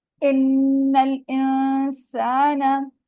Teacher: फिर आगे नून साकिना आ रहा है। नून साकिना को हम इसकी आवाज को नाक में छुपाएंगे, यानी इख्फा करेंगे · नून मुशद्दद है, इस पे हम गुन्ना करेंगे 2 काउंट्स का। फिर आगे नून साकिना आ रहा है।